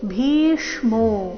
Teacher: ಭೀ ಮಹಾಪ್ರಾಣ ದೀರ್ಘ ಬಂದು ನಂತರ ಆಘಾತ ಮೋ ಮೇಲೆ ಸಹ ಆಘಾತ